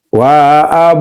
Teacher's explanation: Qalqalah sugra itu adalah bacaannya tipis atau enggak kuat, lemah. Wa ab enggak kuat lemah.